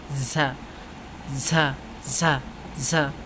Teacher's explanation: জিহ্বার আগা সামনের নিচের দুই দাঁতের প্যাট ও আগা হইতে উচ্চারিত হয়